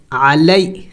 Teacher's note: عین حروف حلقی میں سے ہے اور وسط حلق سے ادا ہوتا ہے